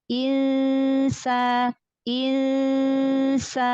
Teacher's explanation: Samarkan lagi nun sukun, tipiskan lagi nun ketemu sin. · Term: ikhfa